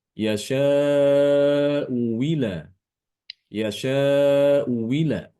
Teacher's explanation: boleh juga dengan mengibdalkan hamzah yang kedua dengan huruf wawu. Ya. Hamzah kedua itu diganti dengan huruf wawu.